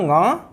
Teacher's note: यहाँ एक बात ध्यान देने की यह है, जैसे कवर्ग के कंठ से कवर्ग पूरा उच्चारित होता है, यहाँ पर हम देखेंगे कि ये पंचम वर्ण जो है वो कंठ से तो उच्चारित होता ही है, साथ में नासिका से भी उच्चारित होता है